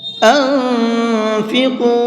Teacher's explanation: انفقو، اس نون کے اندر اخفا کریں گے، یعنی کہ آواز کو تھوڑی دیر ناک میں چھپا کر کے پڑھیں گے، اس طرح سے، اور یہ قاف ہے، اس کو منہ بھر کے پڑھیں گے